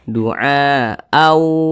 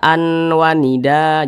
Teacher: Jadi bunyi tanwin ini dimasukkan atau dileburkan ke huruf waw, maka dibaca du'a au, jangan dibaca an wanida, jangan, tapi dibaca au, langsung dimasukkan ke huruf waw, au, kemudian didengungkan. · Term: idgham bi gunnah